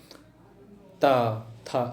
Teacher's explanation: आपकी जीवा जो होगी कहाँ टच करेगी, आपके दंत में, तो उसे कहेंगे दंत।